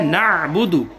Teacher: عین کی ادائیگی کا خاص طور پر خیال رکھیں گے، یہ حلق سے ادا ہوتی ہے